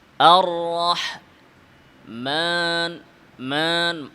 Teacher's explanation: মিমের আওয়াজ নাকে যাবে কিন্তু আলিফ যেন নাকে না যায়। আর রহমা, মা, মিম নাকে।